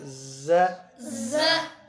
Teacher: زا پر سیٹی آئے گی. ہاں یہ حروف صفیرہ